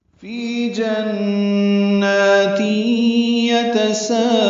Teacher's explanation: تا کو یا سے ملائیں گے، ادغام ناقص مع الغنہ ہوگا